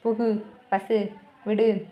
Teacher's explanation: இத நீங்க உச்சரிச்சு பார்க்கும்போது ஒரு மாத்திரை அளவுல முழுமையா ஒளிக்கிற மாதிரி இருந்துச்சுன்னா அது முற்றிலுகரம்தான்